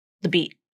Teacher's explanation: This word the, oftentimes that vowel just gets dropped. It's almost just like a TH sound. The beat. Instead of trying to think of the beat, or the beat, instead of trying to put this schwa sound in there, try to get rid of it.